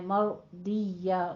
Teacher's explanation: رو بھی مفخم ہے ضاد بھی پر پڑھنا ہے مفخم ہے